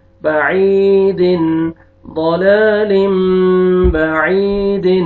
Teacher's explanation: تنوین کے بعد بار ہے، آپ نے نون کو میم میں چینج کرنا ہے، اور آگے یا مد ہے، یا سکون سے پہلے کسرہ، یہ عین کو آپ نے کھینچنا ہے.